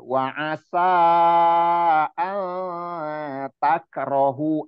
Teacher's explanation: samarnya suara nun sukun dengan persiapan posisi lidah kita di huruf ta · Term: ikhfa